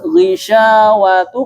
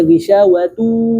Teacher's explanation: hati-hati idgham bi gunnah dia harus masuk hidung. Jadi harus ghishawatu, kalau kita tutup hidungnya dia berpengaruh.